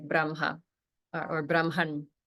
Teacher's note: the way that we pronounce it is that the m and the H sound gets reversed and that's simply a particular rule of pronunciation it's probably only